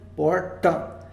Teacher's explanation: A gente tem o T retroflexo, aquele T de porta, de caipira, porta.